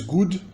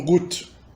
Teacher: uma dessonorização de consoantes finais de morfema em alemão